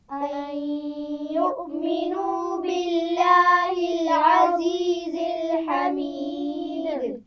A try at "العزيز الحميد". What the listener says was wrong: عزیز اس میں کوئی آواز بھی موٹی نہیں ہے. عزیز الحمید.